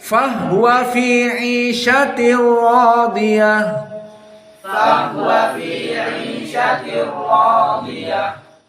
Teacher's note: Hanya Al-Kisai dan qiraah Asusi dibaca fahwa sukunil ha.